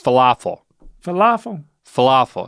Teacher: emphasize the middle syllable